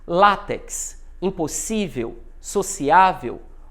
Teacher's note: Sílaba tônica é a penúltima. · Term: Paroxítonas